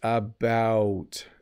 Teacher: it's a little bit if you listen to it it's about it's very round in the o sound